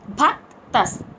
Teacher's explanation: భ మహాప్రాణక్షరం భ స్ట్రెస్ ఇచ్చి పలకాలి భక్తస్ కింద త వత్తు క కింద త వత్తు విసర్గచ్చరణ పొల్లు స